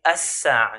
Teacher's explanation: So al-sa'a, the hour, the lam al-sakina will merge onto the sin. So this will be as-sa'a instead of saying al-sa'a. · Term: idgham